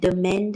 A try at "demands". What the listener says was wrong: Demands. Demands. With an S. Demands. Don't forget the S.